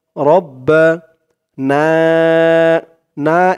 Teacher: এখানে তিন আলিফ টান হবে মধ্যে মুনফাসিল